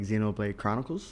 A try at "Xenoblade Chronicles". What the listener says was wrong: You always mispronounce it. It's just called Xeno. It's not X-Xeno. I know, but then when you say like Xenogears, you call it X-Xenogears.